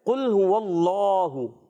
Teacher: اللہ کا لام موٹا، اس میں جلالت کا لام، اللہ پاک کا جب لام آتا ہے اس سے پہلے زبر آ جائے، پیش آ جائے، تو ہم نے پور پڑھنا ہے.